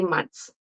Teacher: it's almost like the TH kind of disappears when I listen to speakers